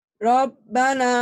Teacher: Tafkhim. Huruf ro ini kan tulisannya ra ya, dibacanya o ya, ro jangan ra ya.